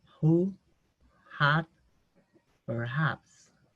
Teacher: La H en inglés es mayormente muda, no tiene sonido, pero en algunas palabras vamos a escuchar un sonido. Es un sonido parecido a una aspiración suave, como una J muy suave